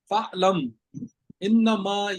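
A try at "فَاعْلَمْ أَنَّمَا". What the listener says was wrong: इन्नमा नहीं है, फ़अलम अन्नमा।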